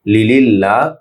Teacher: আল্লাহ শব্দের লাম, ল না হয়ে লা হবে, পাতলা হবে